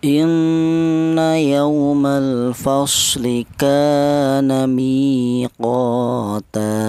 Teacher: Untuk yang inna di sini ada nun yang bertasydid yaitu dibaca ghunah.